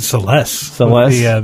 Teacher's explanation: The accent on the second syllable.